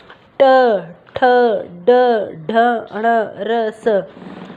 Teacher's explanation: जैसे देखिए री, देखिए हमारी जीभ है वो ऊपर की तरफ जाकर मुड़ गई है। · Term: मूर्धा